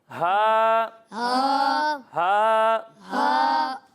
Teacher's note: اور جب ہم ہا کی ادائیگی کریں گے تو اسے حلق کے نیچے والے حصے سے پڑھیں گے